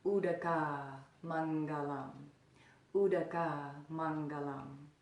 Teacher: the second word you notice that there's a long ah at the end so that would be Boadicea Mangalam Boadicea Mangal um the next